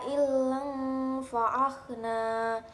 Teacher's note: Ailang fa'akhna, terdapat bacaan ikhfa hakiki karena ada fathah tanwin bertemu dengan huruf fa. Cara membacanya samar-samar membentuk huruf fa.